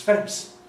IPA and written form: fens (fence)